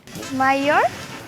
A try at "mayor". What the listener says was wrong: That's nearly right, but it has a different vowel sound. We pronounce this word in different ways in the US. Some people say mayor with 2 syllables, and I say mayor with 1.